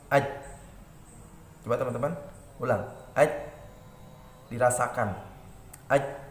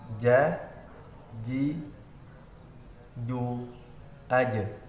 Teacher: Huruf jim tidak boleh keluar desis nafas.